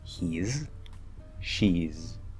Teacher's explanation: There might be partial end of word devoicing that sort of ends it in an S that might confuse you, but it is supposed to be a Z sound.